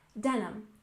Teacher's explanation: we stress the first syllable in denim